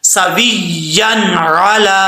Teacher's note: اب اس کو کلیئر کر کے پڑھنا ہے سویان علا، عین کو بھی کلیئر کرنا ہے، حمزے کی آواز نہیں آنی چاہیے. لام کے اوپر کھڑا زبر ہے، 1 الف کی مقدار لمبا کریں گے.